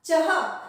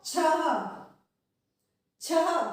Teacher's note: देखिए अंत में अह की आवाज आनी है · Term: विसर्ग